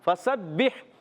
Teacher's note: बा मुशद्दद, ज़रा रुक कर अदा करेंगे, बा को हा से मिलाएंगे, हा की अदायगी हलक के दरमियान वाले हिस्से से।